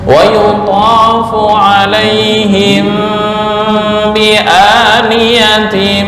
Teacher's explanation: Mim mati bertemu ba, bacaan ikhfa syafawi, dengung ditahan.